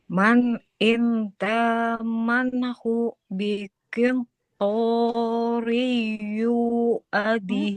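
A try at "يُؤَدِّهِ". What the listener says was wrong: Yu-nya nggak panjang. Yu'addihi, bukan yu. Yu'addihi. Ada tasydid di sini. Yu'addihi.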